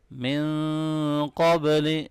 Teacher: نون ساکن پہ یہاں اخفا ہوگا اور با پہ قلقلہ ہوگا اور قاف کو موٹا پڑھیں گے